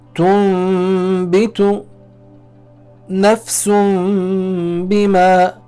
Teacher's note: Whenever Noon Sakin or Tanween is followed by the letter Ba, the Noon Sakin or Tanween is changed into the letter Mim. This letter Mim is then recited with a nasal sound, also referred to as a Ghunnah, and it's held for 2 harakat. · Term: Iqlaab